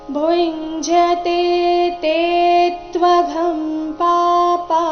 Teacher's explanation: ಭುಂಜತೆ ತೇ ತ್ವಘಂ ಪಾಪಾ ಭುಂಜತೆ ಇಲ್ಲಿ ಭೂ ನಂತರ ಇರೋ ಅನುಸ್ವಾರದ ಉಚ್ಚಾರಣೆ ಚ ವರ್ಗದ ಅನುನಾಸಿಕ ಯ ರೀತಿ ಬರಬೇಕು.